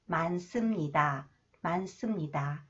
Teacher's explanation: Okay, next one, 많습니다. Okay, when the final consonant 니은 히읗 is followed by 시옷, 시옷 is pronounced 쌍시옷, s.